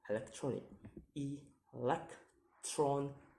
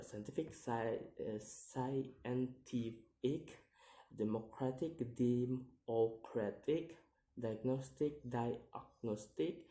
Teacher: the stress is commonly placed on the second to the last syllable of the word. All we have to do is count the word syllable backwards and to place the stress on the second syllable from the last one.